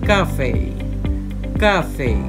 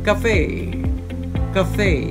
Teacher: in british english the word is stressed on the first syllable